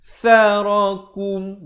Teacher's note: Huruf sa hujung lidah juga tapi keluar lebih sedikit daripada huruf zal